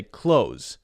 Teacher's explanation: it's so common for even native English speakers to just say close with no th there